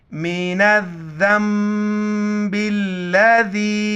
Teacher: बीच में अलिफ और लाम को नहीं पढ़ेंगे, नून को दाल के साथ मिलाएंगे। और नून साकिन के बाद बा आ रहा है तो ये दाल को मीम छोटी मीम के साथ मिलाएंगे, नून के साथ नहीं मिलाएंगे।